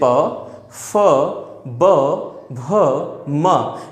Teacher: प वर्ग के जितने भी व्यंजन होते हैं, जैसे प, फ, ब, भ, म, ये पांचों हमारे जो भी व्यंजन हैं ये ओष्ठ से उच्चारित किए जाते हैं।